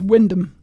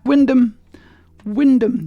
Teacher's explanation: you just completely ignore all the bit between the W and the N